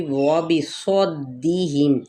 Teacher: زبر کو دال کے ساتھ دباؤ کے ساتھ ادا کرتے ہوئے دال کی زیر کو واضح طور پر پڑھنا ہے لیکن لمبا نہیں کرنا